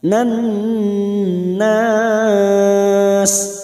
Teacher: Nan masuk pada huruf nun yang bertasdid dan mendengung selama 3 atau 2 harokat.